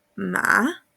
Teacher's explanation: El tercer tono, aquí parte arriba, baja y vuelve a subir.